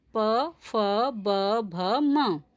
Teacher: ये वर्ण ओष्ठ्य कहलाते हैं। इन वर्णों का उच्चारण करते समय दोनों ओष्ठ आपस में मिलते हैं